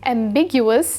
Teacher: The stress is on the second syllable, big, which you can remember since something that's ambiguous can lead to big misunderstandings.